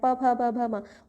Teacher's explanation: अब हमारे जो ओष्ठ यानी कि जो हमारे होठ हैं, प फ ब भ म, होठ्स वाइब्रेट कर रहे हैं। देखो जब हम इस साउंड को प्रोड्यूस कर रहे हैं तो होठों से जो हमारे होठ है एक दूसरे के साथ क्लैप कर रहे हैं।